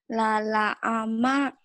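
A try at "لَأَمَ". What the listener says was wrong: Jangan ke ain ya. Lala ama.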